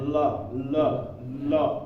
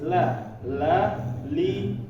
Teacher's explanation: huruf lam ini termasuk dari huruf-huruf yang semuanya itu tipis